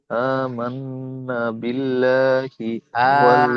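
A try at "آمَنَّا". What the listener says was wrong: আমান্না, না টান হবে।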